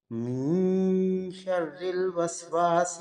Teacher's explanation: اگلی آیت میں نون ساکن یعنی کہ من کا جو نون ہے اس پہ اخفا ہوگا، آگے شین جو ہے وہ حروف اخفا میں سے ہے، اور شرری کا را جو ہے یہ باریک پڑا جائے گا کیونکہ را مشدد نیچے زیر ہے